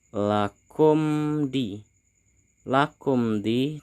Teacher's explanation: terdapat huruf mim mati bertemu dengan huruf Dal maka disebut dengan izhar syafawi kita harus membacanya jelas